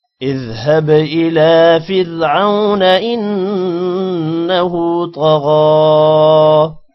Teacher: را موٹا نہیں ہوگا کیونکہ را کے پہلے زیر آ رہی ہے